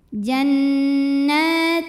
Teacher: karena ada baris fathah panjang dibacanya Cukup dua harakat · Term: Mad Thobi'i